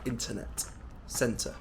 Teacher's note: Americans sometimes drop the T as well especially when it comes after an N